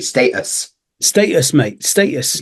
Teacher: So in America, you Uh, might hear status, whereas we say status in Britain. well, I don't even say the T.